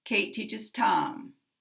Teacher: 'Tom's a one syllable word, there's a slide down at the end– intonation. · So when you hear my voice go down, that is not stress, that is intonation.